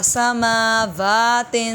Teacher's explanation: سماوات کھڑا زبر کی وجہ سے لمبا کیے جائیں گے